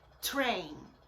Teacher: é com a língua no céu da boca e sopra explode na hora de falar